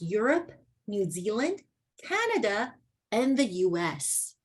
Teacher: we don't keep going downwards. Instead, you want to go up, up, up, and the last one would be down.